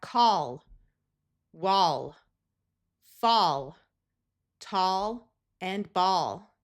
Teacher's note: All of these words will use the broad a sound of ah